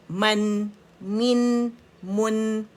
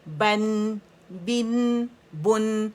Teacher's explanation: میم کے لیے خشک حصے، اور با کے لیے گیلے حصے آپس میں ملیں گے. یہ نرمی سے ملیں گے, یہ سختی سے ملیں گے.